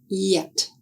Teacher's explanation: To make the sound of the letter Y, yuh, air is blocked by the tongue placed between the ridge and the teeth. The tongue drops to the middle of the mouth as the sound is made. Yuh is a voiced sound.